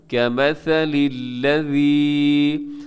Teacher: وَمَثَلُ الَّذِينَ كَفَرُوا، آگے كَمَثَلِ الَّذِي، یہاں پہ جو لکھا ہوا ہے الَّذِي، یہاں پہ یائے مدہ ہے، اسے تھوڑا سا کھینچ کے لمبا کر کے پڑھیے گا